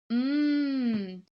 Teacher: when I say the M sound mmm my lips stay closed